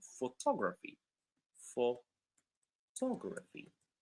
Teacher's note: in the second one, photography, it's the second syllable that becomes stressed